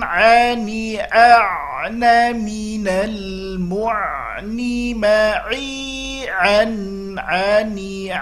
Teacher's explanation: kita latih murni dari wastul halqi, tengah-tengah tenggorokan. Ani a'na minal mu'ni ma'i ani huruf a melatih jangan sampai ke hidung, kalau tidak bunyinya menjadi tidak, ya, dia murni dari tenggorokan. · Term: huruf ain